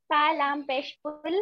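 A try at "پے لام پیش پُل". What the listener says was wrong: पे, पा नहीं बोलेंगे पे बोलेंगे, आप पे लाम पेश, पे लाम तुल, ठीक है।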